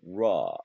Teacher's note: 라라는 거는 혀를 최대한 말아서 안에서 말아줘야 됩니다. 그래서 입천장에 닿으면 안 돼요.